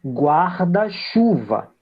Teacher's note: Então, mesmo que nós tenhamos duas forças, uma é de guarda e a outra é de chuva, claramente eu tenho dois acentos que são mantidos, mas na formação desse vocábulo único, um é quem fica com a maior intensidade. No caso, o chu